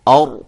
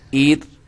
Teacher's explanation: جب میں نے اور کہا تو را کو موٹا کیا، ایر کہا تو را کو باریک کیا